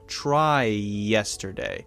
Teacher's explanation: The basic idea is that we are sharing the vowel sound, and that allows us to link words together so that when we say a whole sentence, it sounds very smooth, very natural, it flows, and even if we're speaking slowly, we sound more fluent.